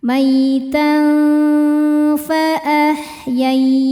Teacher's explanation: Maitan berikutnya ikhfa hakiki ausat karena tanwin fathah berhadapan dengan fa. Dibacanya tanwin ini samar-samar menghadapi huruf fa ya, bersiap ke fa disertai dengung. Nah, karena fa makhrajnya tidak dekat juga tidak jauh dari nun maka dengung dan samarnya sama. · Yai ada huruf lin sebab ada ya sukun sebelumnya fathah. Dibacanya lembut atau lunak. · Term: ikhfa hakiki awsat